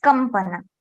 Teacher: If there is some, you see, as kampana, we have kam, we have anuswara, and after anuswara there is pa. Then anuswara is getting converted into ma.